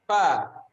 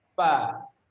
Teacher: fa itu dibacakan antara gigi atas dan bibir bawah. Ini fa, bukan pa. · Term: huruf fa